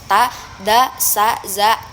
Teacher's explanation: alveolar itu bunyi dari lidah dan gusi